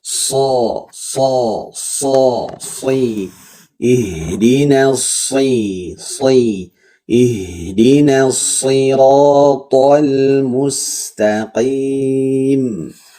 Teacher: ujung lidah ujungnya menyentuh ke gigi seri bawah ya atau hampir sh naikin pangkal lidahnya nah khusus shad bukan cuma naik pangkal lidah tapi seluruh lidahnya ya · khusus sod bukan cuma naik pangkal lidah, tapi seluruh lidahnya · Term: huruf sod